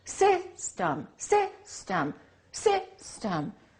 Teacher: We don't say system, we say system. The first syllable is stressed, the second syllable is reduced. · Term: reduced vowel